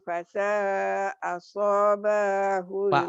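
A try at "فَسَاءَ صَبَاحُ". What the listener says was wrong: fasa asoba. Soalnya pendek.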